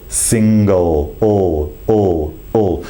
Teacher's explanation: almost like a banana shape in the mouth with the tongue the back of the tongue is raised the tip of the tongue is raised behind the front top teeth